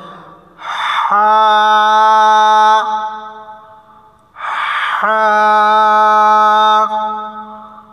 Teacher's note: হা বলার সময় গলার ভিতর থেকে ফ্যাঁস ফ্যাঁস আওয়াজ হবে